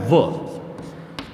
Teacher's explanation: इसमें हमें सीधा याद रखना है कि एक वर्ण होता है व, इस व वर्ण का जो उच्चारण स्थान होता है वो होता है दंत ओष्ठ